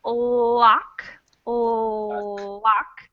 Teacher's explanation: you can tell my tongue is right behind my teeth it's really close to the front of my mouth but still it is behind my teeth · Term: the l in lock